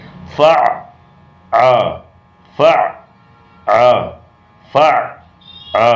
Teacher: عین حلق کے اندر مل کے رکتا ہے اس طرح سے. فع آ فع آ فع آ اس طرح سے فع آ.